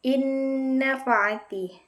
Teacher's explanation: cara membacanya nunnya dimasukkan dengan cara didengungkan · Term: idgham bighunah